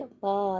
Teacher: दोनों होठ आपके आपस से मिलेंगे